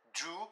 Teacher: le O se prononcera /u:/ , par exemple dans do